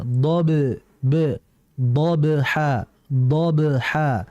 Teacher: Kemudian dbha do dbha di situ ada huruf dhad dan huruf dhad ini merupakan huruf yang keluar dari lidah bagian samping ya. Ketika huruf dadd dibaca db di situ ada ba, ada huruf ba yang dia sukun.